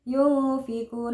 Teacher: nun sukun bertemu Fa jadi dibaca samar